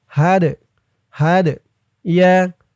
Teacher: দালটা কলকলের হরফ ধাক্কা দিয়ে পড়তে হবে